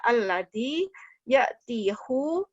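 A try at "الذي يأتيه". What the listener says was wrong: Ya'tihi dong, masa ya'tihu? Alladzi ya'tihi.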